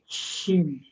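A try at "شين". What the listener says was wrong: Jangan keluarin in-nya dulu. Jangan keluarin in, keluarin anginnya dulu. ya, berasa nggak dari tengah lidah mengalir ke pinggir-pinggir? Nanti tinggal dibuka.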